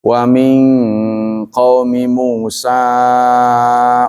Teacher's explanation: Nun mati bertemu dengan qof ini namanya ikhfa ab'ad dibaca Eng